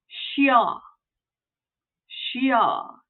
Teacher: Not only are we turning this into an SH sound, but we have to sneak that Y in there.